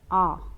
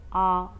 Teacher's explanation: जैसे आ तो आ बोल के देखो आ तो मुंह बहुत बड़ा खुलता है तो उसे बोलते हैं विवर्त स्वर